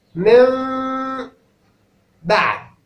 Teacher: قلبت النون ميم، ثم أتيت بالإخفاء الذي هو ما بين الميم والباء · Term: الإقلاب